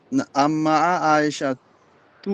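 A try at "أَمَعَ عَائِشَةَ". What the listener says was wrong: আম্মা হইতো না, আমা।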